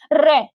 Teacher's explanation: इसको लुंठित इसलिए बोलते हैं, जब हम रे का उच्चारण करते हैं तो हमारी जीभ कप कपाती है, यानी कि 2-3 बार ऊपर नीचे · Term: लुंठित व्यंजन